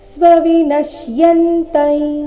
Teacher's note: ಮುಂದೆ ಅನುಸ್ವಾರ ಉಚ್ಚಾರಣೆ ನಾಸಿಕಾಯ ರೀತಿ